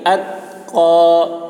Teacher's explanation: تا میں آواز ٹکرائے گی نہیں